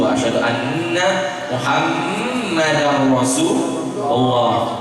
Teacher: Idgham bila guna, tanwin bertemu ro jadi bila guna dikasih tasdid.